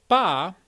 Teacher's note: look at ba which is an unaspirated p you'll see that there's the burst and there's no voicing noise right beforehand and right after the burst basically the vowel kicks in very quickly